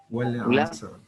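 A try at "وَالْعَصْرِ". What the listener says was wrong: Nah, sempurnakan lamnya wal laisa wal asr wal bukan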